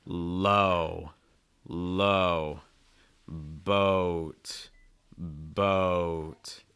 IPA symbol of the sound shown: oʊ